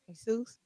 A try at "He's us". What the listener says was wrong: No, just say it like you say Jesus with an H. He's us.